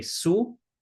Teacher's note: Shu is often pronounced as su.